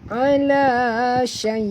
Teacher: Dari kat hamzah ni kita matikan, dia kena berbunyi tersentak sikit